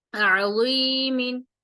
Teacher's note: اب یہ ضا جو ہے نرمی سے پڑھا جاتا ہے اور موٹا پڑھا جاتا ہے